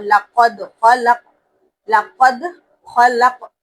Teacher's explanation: خا کو پر پڑھنا ہے، پھر دوسرے خوف کو بھی پر پڑھنا ہے اور خوف پر جھٹکا بھی دینا ہے کیونکہ اس کے اوپر بھی جزم ہے · دال پر قلقلہ کرنا ہے کیونکہ اس پر جزم ہے